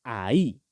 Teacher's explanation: tiene tilde en la I, por lo tanto que tenemos que hacer el énfasis ahí